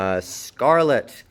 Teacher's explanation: Scarlet with an unreleased T. PTK, BDG at the end of a syllable is unreleased.